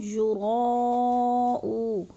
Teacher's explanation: یراؤ پہ مد متصل ہے، 4 الفی مد ہے، 4 الف کے برابر اس کو ہم نے لمبا کرنا ہے